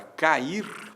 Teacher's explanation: duas vogais que vem sequência e ficam em sílabas distintas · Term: hiato